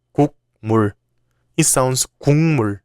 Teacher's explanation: when 기역, 디귿, or 비읍 come before 니은 or 미음, they change to nasal sounds, 이응, 니은, or 미음. For example, this word doesn't sound 국물, it sounds 국물.